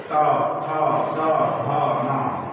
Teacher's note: दंत वर्ण का उच्चारण दांत के ऊपरी दांत के निकट से त, थ, द, ध, न, ऊपरी दांत की जिह्वा जो है ऊपरी दांत पर जाकर के स्पर्श करती है